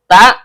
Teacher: ujung lidah bertemu dengan pangkal gigi seri atas